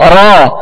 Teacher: لہذا اس طرح ادا کرنا کہ ایک را کی بجائے کئی را بن جائے تو یہ درست نہیں، بلکہ اس میں وہ جو اس کی خوبی ہے تکرار، اس کی مشابہت ادا کرنی ہے. مشابہت ادا کرنی ہے، کامل تکرار ادا نہیں کرنی، بس ہلکی سی کپکپاہٹ ہو. جب را کو ادا کریں تو زبان اس کے جب مخرج میں لگے تو ہلکی سی کپکپاہٹ ہو.